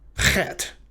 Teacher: But the problem is that, if I'm not mistaken, the CH in Bach and in Lach, they're a little softer, to put it one way, than the sound that this letter makes in Hebrew. In Hebrew, it's a wetter sound and a rougher sound than the CH in Bach and Lach. This almost sounds like you're clearing your throat.